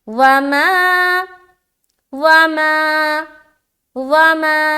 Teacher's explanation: وما، واو زبر وا، میم الف زبر ما، ما میں الف مدہ کر رہے ہیں، ایک الف کے برابر کھینچنا ہے.